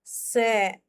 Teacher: स है दंत्य स, जिसमें दांत का यूज होता है, जैसे स, बोल के देखो एक बार, स।